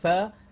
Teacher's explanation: our target sound is only the lower lip touching the top teeth to say fur and a continuous flow of air out